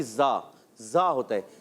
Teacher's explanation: سیٹی والا حرف اور نرمی والا حرف. ٹھیک ہے، تو اس کو نرمی اور سیٹی کے ساتھ ادا کریں گے. زا کو زال سے نہیں بدلنا، اس چیز کا خیال رکھنا ہے.